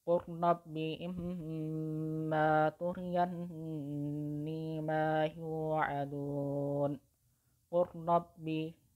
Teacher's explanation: setelah huruf qaf yang berharokat dhammah itu, setelah itu langsung dimasukkan ke huruf ra yang di depannya yang berharokat tasydid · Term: idgham mutaqaribain